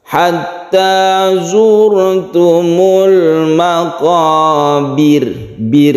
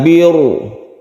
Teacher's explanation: Kemudian izhar qamariyah karena ada al bertemu dengan mim, maqabir. Maqabir ini baknya berkasroh sehingga roknya itu menjadi tipis atau tarqiq. Kita membacanya tipis, caranya bibir kita ketika membaca bir, sukun ro itu ke bawah.